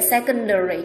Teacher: Ý C có đuôi ARI, đuôi ARI làm trọng âm dịch chuyển 4 âm, vậy secondary trọng âm sẽ rơi vào âm đầu tiên